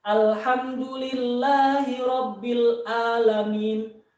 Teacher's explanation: ini karena kurang memperhatikan makhrojul huruf Alhamdulillahirobbil alamin ah buka Nah jadi dirubah huruf Ain yaitu menjadi huruf hamzah Nah itu tergolong itu kepada lahnul Jali kesalahan yang nampak dan